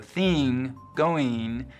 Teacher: the short I vowel, the kit vowel, is being split in two. Before NG, it's likely to sound like E, so thing, going, just like the rest of the West, but otherwise it's lowered like dress and trap.